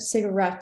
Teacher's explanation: stressing the last syllable instead of the first two